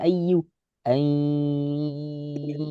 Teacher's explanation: Dengung. Dua harokat. Sengau. Hidung sebagian, mulut sebagian. Jangan jernih.